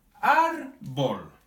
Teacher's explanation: Por ejemplo, árbol. Sí, tiene la sílaba tónica en la penúltima sílaba y como termina en L, en consonante, se acentúa. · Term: palabras llanas